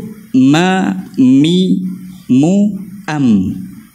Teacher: Dan apabila kita sebut ma, mi, mu, am, kita sebut dengan kemas. Dua-dua bibir tu kita sebut dengan kemas, kita rapatkan betul-betul mim tu.